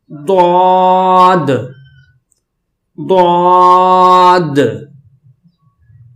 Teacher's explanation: اسے بھی موٹا پڑھیں گے لیکن زبان کو دائیں اوپر کی داڑھ سے لگائیں گے یا بائیں والی اوپر کی داڑھ سے لگا کر پھر اس لفظ کو ادا کریں گے، جیسے کہ ضاد ضاد۔